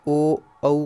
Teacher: कंठ और ओष्ठ से जो है वह ओ औ का उच्चारण किया जाता है